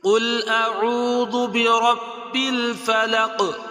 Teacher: اس صورت کے اندر تقریباً ہر آیت کے آخر میں قاف ہے، اور قاف حروف مستعلیہ میں سے ہے، اور یہ حروف قلقلہ میں سے بھی ہے